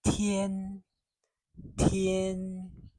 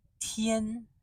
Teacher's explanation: It is first tone, as I've said, high and steady.